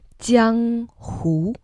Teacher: Jiang, the first tone, and hu, which goes up